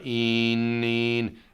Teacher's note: If I say een, my tongue is tighter, my tongue is higher up. In, let the tongue drop.